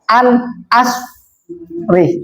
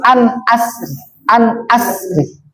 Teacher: ro-nya boleh dibaca tafkhim atau tartik, artinya boleh dibaca tebal atau boleh dibaca tipis. An asri itu kalau yang dibaca tebal, an asri.